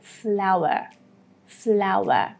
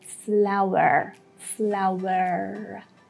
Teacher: in the British version, again, that R at the end is not that much clear when you hear it